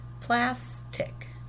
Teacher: it's a higher pitch that plus part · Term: accent, accenting that syllable